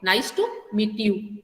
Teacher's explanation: Okay, so when I say meet you, okay, at that time if you pronounce the word, then you find that after meet my voice doesn't rise. Okay, instead of rising it is falling. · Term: falling intonation